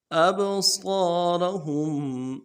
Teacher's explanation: یخطف ابصارهم، ابصارهم، اب یہ حروف قلقلہ میں سے با، جب ساکن ہو تو قلقلہ ہوگا، قلقلہ کریں گے۔ اب صاد کو موٹا کریں گے، الف مدہ کھینچیں گے، را کو موٹا کریں گے، ہم میں جو میم ساکن ہے غنہ کریں گے۔